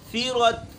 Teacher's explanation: ثا باریک ہے اور را موٹی ہے